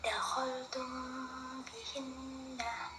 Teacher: Baik, selanjutnya kita akan membahas mengenai jenis yang kedua yaitu ikhfa syafawi adalah hukum bacaan yang menyamarkan atau menyembunyikan huruf mim pada saat mim mati bertemu ba terdengar seperti didengungkan